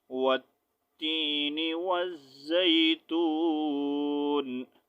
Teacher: اب یہاں پر سانس میں نے توڑا، سٹاپ کیا، نون کو ساکن کر دیا